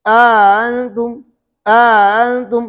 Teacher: پہلے حمزے کو ہم نے ایک الف کے برابر کھینچا، اس کو ادخال کہتے ہیں۔ دوسرے حمزے میں تسہیل کیا۔